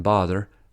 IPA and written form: bɒðə (bother)